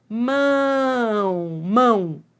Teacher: É um ditongo que vai do forte para o fraco, decrescente e nasal. Entendeu? Porque sai pelo nariz. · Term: ditongo decrescente